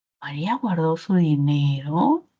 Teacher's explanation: el último tono final, que es un tono final ascendente porque está arriba de toda la curva melódica, cumplirá función distintiva. · Y digo, María guardó su dinero y percibo esa curvita melódica ascendente. O sencillamente, pues quizá recuerdo que esta es una oración interrogativa, directa, total, y yo sé que las totales tienen tono ascendente.